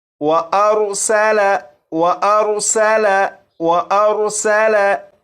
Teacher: इस लफ्ज़ में सीन है, सीन को सीटी की आवाज़ के साथ पढ़ेंगे